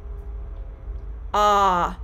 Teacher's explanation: the vocal tract is very open for the production of the short o the jaw is held more open and the back of the tongue is held lower than any other sound in the american english vowel sound pronunciation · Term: short O vowel sound